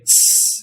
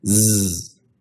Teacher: Now, if you do that same thing, but say S instead, you'll find that there is no buzzing. S is the unvoiced version of Z.